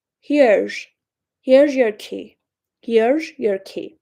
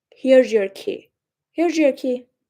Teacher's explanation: native speakers, when they say this word, here's, the z at the end of the word sounds like sh.